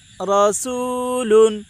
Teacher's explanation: واو ساکن سے پہلے پیش ہے، اس لیے واو مدہ ہوگا، واو مدہ کو ایک الف کے برابر کھینچ کر پڑھیں